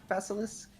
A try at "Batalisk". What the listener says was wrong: The name, yeah, it is Batalisk, not Basilisk. There is no S in there.